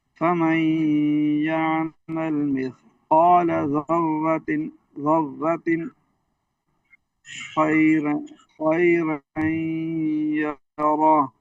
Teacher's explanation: रा पर जबर खींचेंगे नहीं